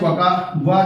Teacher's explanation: वा जो है ये हमारा दंतोष्ठ से उच्चारित किया जाएगा।